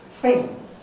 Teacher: word this has a traditional london working class cockney pronunciation thing with an f sound instead of a th sound a labiodental fricative instead of a dental